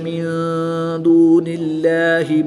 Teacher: جلالت اللہ عز و جل کے لام سے پہلے حرف کے نیچے زیر ہے تو اس لیے اس لام کو پر یعنی موٹا نہیں پڑھیں گے بلکہ باریک پڑھیں گے